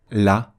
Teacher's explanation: le Lam va être prononcé avec la langue plate, qui est la position naturelle pour prononcer un Lam, la lettre Lam, ou en français la lettre L. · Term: avec légèreté